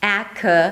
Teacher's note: The first sound is the A as in cat, and then it's a K sound. A K and a schwa.